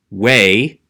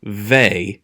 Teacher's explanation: we still say god's personal name with a w pronunciation way instead of vey even though the rest of the time i use the v